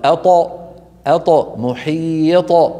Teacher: وإذا سكنت تقلقل.